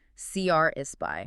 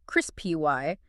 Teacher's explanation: you need to make sure you put the weight, the stress on that first syllable